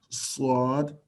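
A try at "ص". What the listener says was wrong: Little bit longer. Swad.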